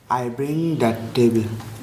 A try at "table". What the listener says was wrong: টেবিল না তো, টেবল। I bring the টেবল।